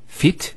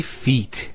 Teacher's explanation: We don't say fit, we say feet. There's an elongation of the E sound.